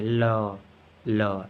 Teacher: फिर आता है हमारा पार्श्विक व्यंजन, हवा जीभ के दोनों बगलों से निकलती है